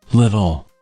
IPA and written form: ˈlɪɾl̩ (little)